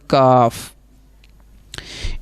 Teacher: اور جو دوسرا کاف ہے کتاب والا وہ کہاں سے ادا ہوگا؟ وہ زبان کی جڑ اور تالو کا سخت حصہ